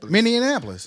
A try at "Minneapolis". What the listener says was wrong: No, Minneapolis. You added extra letters though.